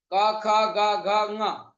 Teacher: क ख ग घ यह पांच व्यंजन कंठ से बोले जाते हैं